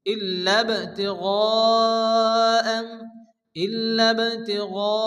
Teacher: وما لأحد عنده من نعمة تجزى وما لأحد عنده من نعمة تجزى إلا ابتغاء, বার উপরে জজম এসছে, বা হচ্ছে কলকলার অক্ষর হালকা ধাক্কা দিয়ে পড়তে হবে। তিগা, মদের পরে হামজা একই শব্দের মধ্যে আসছে, মধ্যে মুত্তাসিল, 4 আলিফ পরিমাণ টেনে পড়তে হবে